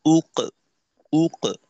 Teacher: প্রথমত হলো হামজার পেশের উচ্চারণের জন্য ঠোঁট গোল করতে হবে, আর দ্বিতীয়ত কফের উচ্চারণের জন্য ঠোঁট খুলতে হবে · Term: কফের কলকলা